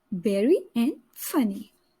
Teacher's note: letter Y says the long sound of letter e that is e at the end of disyllabic or multi-syllabic word